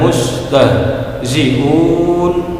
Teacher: Akan tetapi ketika bertemu dengan huruf yang disukunkan, na menjadi sukun dikarenakan berhenti atau waqaf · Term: mad arid